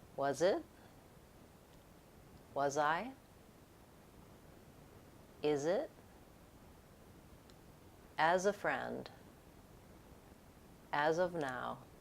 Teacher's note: my voice stays on as I link the final Z to the next vowel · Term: final Z linking